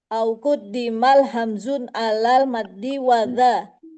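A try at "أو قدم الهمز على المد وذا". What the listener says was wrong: bukan hamzun. أو قدم الهمز.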